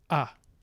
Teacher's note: short vowels so this would be something like ah in english we have this schwa which is no onset no coda just just the nucleus of a short vowel which is schwa